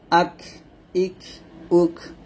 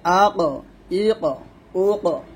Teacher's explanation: কাফে সাকিন আসলে কল মানে হামস হবে, আর কফে সাকিন আসলে কলকলা হবে